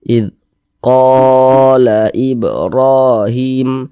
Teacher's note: qo dipanjangkan dua harakat dua harakat itu kira-kira sepanjang dua ketukan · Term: Mad